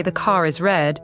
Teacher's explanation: the R comes back to life to link car and is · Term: linking R